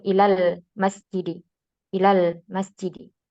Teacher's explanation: langsung masuk ke lam sukun berikutnya Ilal bukan Ilal Ilal lanya dipanjingin tapi langsung Ilal masjidi Ilal · alifnya ini dihapus atau dihadzaf secara pengucapan. Ya, langsung masuk ke lam sukun berikutnya.